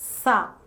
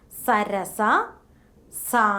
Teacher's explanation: allowing the air to squeeze out producing a hissing noise